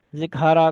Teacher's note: काफ और ता में सांस के जारी करने में इस कदर मुबालगा व गुलू करते हैं कि सिफत शिद्दत ज़ायल होकर हाय हुज की आवाज़ पैदा हो जाती है